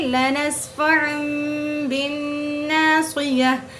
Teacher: دو زبر کی تنوین کو چھوٹی سی میم سے بدل کر پڑھیں گے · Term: اقلاب